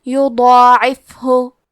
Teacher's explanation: مد الف میں ہم پیچھے والے حرف کا حکم لیتے ہیں تفخیم میں اور ترقیق میں، تو کیونکہ اس کے پہلے حرف الضاد کا حکم ہے تفخیم تو ہم ضاد کو اور مد الف کو دونوں کو بھاری آواز میں پڑھیں گے